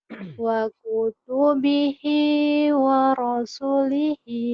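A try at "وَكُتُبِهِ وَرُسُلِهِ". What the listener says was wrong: wa rusulihi wa kutubihi wa rusulihi. Waro dulu. Padahal waru. Kenapa waro nggak waru? Waru tuh kan domah. Kalau waro barisnya patah. Ini waru.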